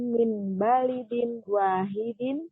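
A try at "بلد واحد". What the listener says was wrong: Baladin, bukan balidin. Baladin.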